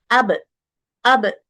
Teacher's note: সিদ্ধা cutting sound, জাহর নিঃশ্বাস বন্ধের sound. তারপরে বলছে কি ইনফিতাহ লাইট হবে সাউন্ডটা, আর কি কলকলা বাউন্সিং সাউন্ড হবে।